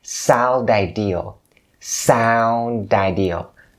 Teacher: the next word is ideal starts with a vowel ideal so you can link the D sound at the end of the word sound to Ideal